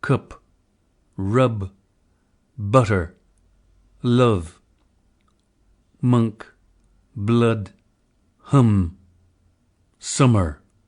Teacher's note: The strut lexical set. Crystal suggests that the close mid-back unrounded vowel captures the likely quality of this vowel.